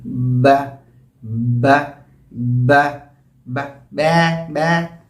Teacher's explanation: होंठों में एक किस्म की वाइब्रेशन भी होती है बा कहने में